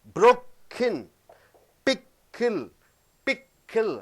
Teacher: வார்த்தையின் நடுவிலே K வரும் பொழுது ஒரு இடைவெளி விடுகிறாய். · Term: glottal stop